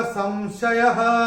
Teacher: अनुस्वार के बाद जब श आएगा तो अनुस्वार का उच्चारण होगा म